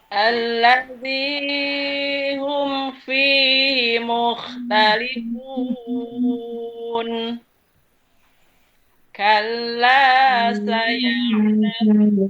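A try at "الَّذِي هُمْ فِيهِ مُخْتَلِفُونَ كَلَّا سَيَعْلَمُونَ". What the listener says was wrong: Tinggi, Bun. Tadi mereng, ini tinggi. allazi hum fihi mukhtalifun kalla saya'lamun.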